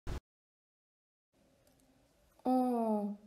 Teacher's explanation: Open back unrounded nasal vowel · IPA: ɑ̃